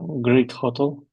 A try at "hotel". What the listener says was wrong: Second syllable is stressed. Not hotel, but second syllable is stressed. Hotel.